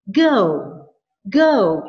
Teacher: Apabila kalimat imperatifnya hanya satu kata, misalnya kata go, maka intonation-nya hanya dibagi kepada dua bunyi ini saja. Go, go, tinggi di atas, rendah di bawah, kemudian berhenti di L boundary